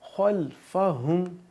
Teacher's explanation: خا حروف مستعلیہ ہے تو اس کو ہم پر پڑھیں گے، تھوڑا موٹا پڑھیں گے. خلفہم، ہا بھاری آواز نکالیں گے، ہم.